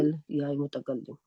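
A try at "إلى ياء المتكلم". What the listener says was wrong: इलल, इलल नहीं करेंगे, यहाँ पे अलिफ लाम नहीं लगाइएगा क्योंकि ये मुजाफ बन रहा है। इला या इल मुतकल्लिम, क्योंकि ये मुजाफ बन रहा है तो अलिफ लाम नहीं लगा सकते अभी,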